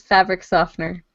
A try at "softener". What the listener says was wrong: Well, yeah, you pronounce the T and that's silent and often.